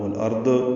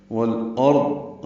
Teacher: والارض میں لام ساکن پہ اظہار قمری ہے، را ضاد دونوں پر ہیں، اور یاد رہے ضاد پہ قلقلہ نہ ہو، والارض یہ غلط ہے، والارض را اور ضاد پر ہوں گے اور ضاد ساکن پہ اظہار ہوگا۔